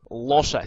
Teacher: 用条脷后面嘅位置读嘅，除咗用条脷前面，用埋后面。所谓嘅▁dark▁l